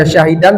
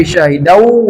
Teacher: tanwin bertemu wau idgham bighunah dimasukkan lalu didengungkan